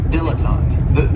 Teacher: this word has 3 syllables, and there's kind of like a stress on that first and last syllable